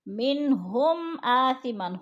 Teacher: میم ساکن کے بعد حروف حلقی میں سے حمزہ آ گیا ہے تو ادھر اظہار شفوی ہے، غنہ نہیں کریں گے